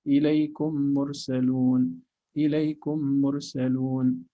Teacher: you are making each meme have just one unit of reading with clear meme. You're clarifying each meme, that's idhar.